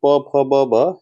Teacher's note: प जो है वो ओष्ठ से बोला जाता है। प वर्ग प फ ब भ ये ओष्ठ, यानी मूर्धा भी नहीं होगा, ना ही तालव्य होगा, ना ही दंत, ये ओष्ठ इसका करेक्ट ऑप्शन हो जाएगा।